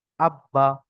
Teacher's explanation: কোন টান নেই তাসদ পড়াকে একদম বড় সিম্পল পড়তে হবে হারাকাতের মত কোন টান ছাড়া